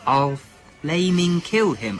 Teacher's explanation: The word flaming is relatively easy to pick out, sir, if you care to look, as it involves an unambiguous labiodental fricative